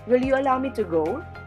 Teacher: the voice starts in a normal pitch, then goes up to the syllable go and remains up until the end of the sentence.